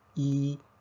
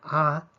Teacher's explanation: apertura que teníamos en la boca si decimos y vemos que y tenemos la boca casi cerrada pero con a tenemos la boca muy abierta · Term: vocales cerradas